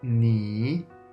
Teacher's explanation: The third tone, you need to go down and then up. Start deep in your pitch and then quickly raise it up. · Start deep in your pitch and then quickly raise it up. When you pronounce this third tone, think about your voice as a check mark.